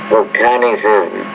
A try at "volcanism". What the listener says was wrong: When you say that first word, volcanism, put more stress on the first syllable. Volcanism.